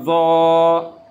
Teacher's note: زبان کی جو لیفٹ سائڈ یا رائٹ سائڈ، اوپر کے جو داڑھ ہیں لیفٹ سائڈ ٹچ کریں یا رائٹ سائڈ ٹچ کریں، صحیح ہے، وہاں سے آواز نکالیں۔